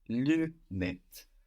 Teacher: the UN in lunette is not one syllable like in lundi